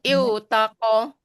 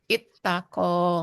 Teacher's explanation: huruf sia waw dan ta melebur jadi ta tasdid jadi ittaqo.